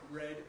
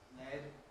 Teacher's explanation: R involves median escape of air, that's down the midline, whereas L involves the lateral escape of air at the sides. If you have your tongue in the position for an R sound and then suck in, you should feel cold in the middle.